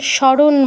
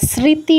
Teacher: দন্তসর সাথে যে মটা যুক্ত আছে মটা আমরা টোটালি স্কিপ করি এটাকে মানে উচ্চারণ করি না আর কি শুধু দন্তসটার উচ্চারণ করি